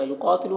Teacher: क़ाफ को पुर पढ़ना हुरूफ़ मुस्तालिया में से